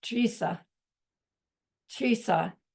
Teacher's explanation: It's spelled D-R-I-S-A, but the D is one of those Tibetan letters that you can't quite tell the difference between a D and a T. So when you hear Geshe say it, it sounds like Trisa.